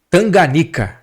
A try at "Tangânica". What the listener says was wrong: Ou Tangânica, né? Rua Tangânica. Todo mundo fala Tanganica, mas aí botaram a placa lá, tem um acento circunflexo. Tangânica, Tangânica.